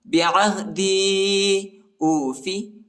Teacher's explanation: یا کے اوپر جو ہے چھوٹا مد آیا ہے، اس کو تقریباً 2-3 سیکنڈ تک کھینچنا ہے